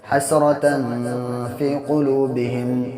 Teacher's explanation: یہ فا ہے. تو فا کس میں کا ہے؟ حروف اخفا کے 15 حرفوں میں سے ہے، اس لیے یہاں پہ ناک میں آواز کو ٹھہرائیں گے